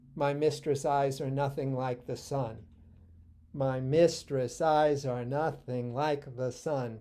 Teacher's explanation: So you have 10 syllables alternating unstressed and stressed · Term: iambs